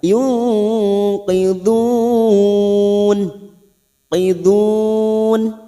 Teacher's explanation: mat arid li sukun 4 harokat kita panjangkan.